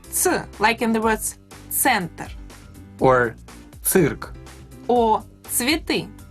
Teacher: to say ц, you pronounce t and s together and very close to each other